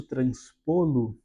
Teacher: Veja que a sonoridade mais forte dela é no o, né? transpor é a parte mais forte dela, ela é moxítona.